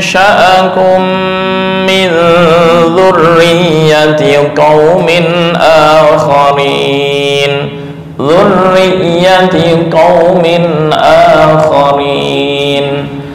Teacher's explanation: Ya yang bertemu dengan ya, tanwin yang berada di ya bertemu dengan ya, itu yang dengung yang lama. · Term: idgham bi gunnah